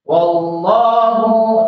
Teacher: Allahnya itu alif lam jalalah, tapi dibaca tafkhim, dibaca tebal.